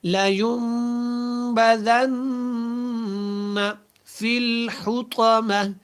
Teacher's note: اس کو موٹا نہیں پڑھیں، اس لام کو لمبا نہیں کرنا